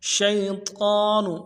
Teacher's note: شین کو یا کے ساتھ ملانا ہے، یا لین ہے بغیر کھینچے پڑیں گے